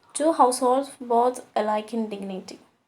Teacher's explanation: So iambic pentameter is a line of verse with 5 metrical feet, each consisting of one short or unstressed syllable followed by one long stressed syllable